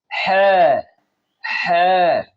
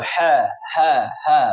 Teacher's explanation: এখন আমরা যে হাটি শিখব সেটি হলো বড় হা, যেটি গলার মাঝখান থেকে উচ্চারণ হয়।